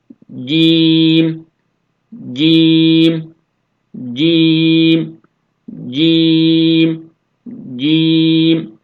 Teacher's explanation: cim harfi dilin ortasını üst damağa yapıştırarak sonrasında bıraktığımızda telaffuz ediyoruz